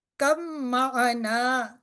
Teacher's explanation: با جو پہلا ساکن ہے یہ نہیں پڑھا جائے گا، اور جو اس سے پچھلا ورڈ تھا کاف وہ ہمارا میم کے ساتھ ملے گا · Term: ہم مخرج